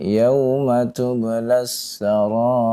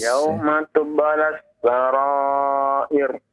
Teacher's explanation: Ra yang di akhir di kalimat tersebut sebelumnya adalah kasrah ya. Maka dibaca dengan tipis, jangan ditebalkan ya.